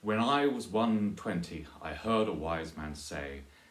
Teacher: But there's a slightly odd thing about the trimeter, which is when it's used in English, it almost always has, it's always arranged like this, which is to say that there is an unstressed syllable attached to the first and the third lines. So it goes da-dum, da-dum, da-dum, da, da-dum, da-dum, da-dum, da-dum, da-dum, da-dum, da, da-dum, da-dum, da-dum.